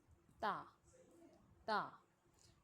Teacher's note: जबान हमारे ऊपर वाले दांतों दो दांतों की जड़ों यानी मसूड़ों पर लगेगी तो ता अदा होगा · جب زبان ہمارے اوپر والے دانتوں، دو دانتوں کی جڑوں یعنی مسوڑوں پر لگے گی تو تا ادا ہوگا